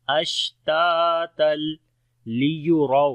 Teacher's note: را کو موٹا پڑھیں گے اور واو لین ہے نرم پڑھیں گے